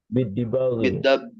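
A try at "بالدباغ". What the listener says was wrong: bidabagi. Kalau di bak tuh baknya ada alifnya, ya. La yathuru bidabagi.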